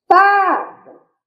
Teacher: O fá saiu com maior intensidade e é a penúltima sílaba, então se trata de uma palavra paroxítona. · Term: sílaba tônica